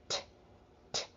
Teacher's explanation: So a sound like T, t, t. If you put your hand in front of your mouth and you say the T sound, t, t, you'll feel a burst of air. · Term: voiceless sound